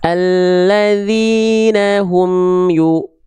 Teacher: harus dibaca dengan vokal U. Monyong mulutnya. Monyong mulutnya. Mencucu mulutnya. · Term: harokat dhammah